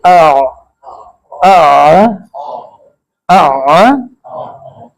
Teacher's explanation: आइन जरा औखे होकर निकलती है, गले से फंस की आवाज निकलती है, जैसे गले में कोई चीज फंस गई हो। आ आ, जैसे गले में कोई चीज फंसती है तो इधर इसमें औखा होना पड़ता है, ठीक है।